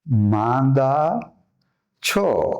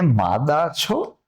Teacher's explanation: મુખ સાથે નાકમાંથી પણ હવા જ્યારે જાય અને જે નાદ થાય તે નાદ તે આ અનુનાસિક